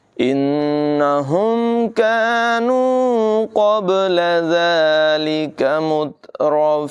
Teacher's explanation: کاف کی آواز باریک ہوگی اور یہاں قاف کی آواز پر ہوگی، با میں قلقلہ کریں گے